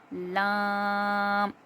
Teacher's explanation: زبان کے کنارے سامنے کے دانتوں کی جڑ میں لگیں گے تو لام. زبان کے کنارے جب سامنے کے دانتوں کی جڑ سے لگیں گے تو لام ادا ہوگا